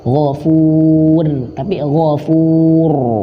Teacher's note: Perhatikan huruf ro di sini. Huruf ro dia dalam keadaan tebal, bukan tipis